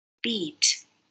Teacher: for the word beat, there's no air going through the nose.